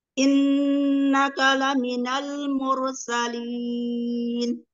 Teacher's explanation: Innaka ada nun bertasdid. Bacaan hunah, guna yang paling sempurna